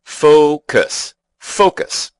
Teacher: The word has two syllables, and the stress is on the first.